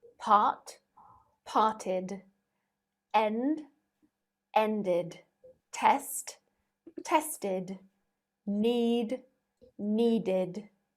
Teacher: letter d if a root word ends in t or de the e d is pronounced as id this means that it adds on an extra syllable